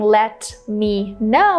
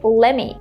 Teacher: instead of saying let me know we can just say lemmy